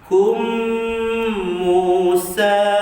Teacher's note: Di sini huruf mim, maka hukumnya idgham mislan syafawi, maka tak boleh kita baca dengan izhar, maka kita mesti membacanya dengan idgham, masukkan dalam mim satu harakat, dua harakat panjang